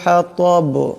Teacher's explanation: এখানে ত আছে আওয়াজটা মোটা করে পড়তে হবে